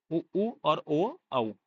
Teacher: जीभा के पिछले भाग से जो है आपके बोले जाते हैं उ ऊ और ओ औ